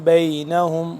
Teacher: جب میم ساکن ہوگا با آ جائے گا تو یہاں پہ ہم اخفا کریں گے